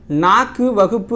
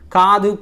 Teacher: வல்லின மெய்கள் ஏறிய உகரம் கு சு டு து பு ரு அப்படிங்கறது தன் ஒரு மாத்திரை அளவிலிருந்து அரை மாத்திரை அளவாக குறைந்து ஒலிக்கும் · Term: குற்றியல் உகரம்